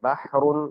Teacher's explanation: ہا کی آواز درمیانے حلق سے رگڑ کھا کر نکلتی ہے